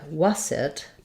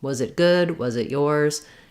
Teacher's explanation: it's not a strong Z but it is the voice sound